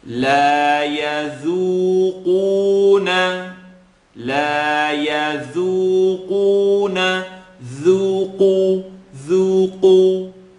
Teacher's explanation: Qaf is heavy and has an u. So I should be able to hear the light dhu and the heavy qu.